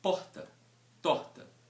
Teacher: que cresceu e nasceu aqui em Belo Horizonte a vida toda eu tenho esse R ele é muito enfraquecido no meu discurso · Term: consoante fricativa glotal